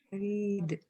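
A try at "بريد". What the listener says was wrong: Itu ro-nya yang panjang, bukan ba-nya. Kalau baridun berarti maknanya dingin gitu ya.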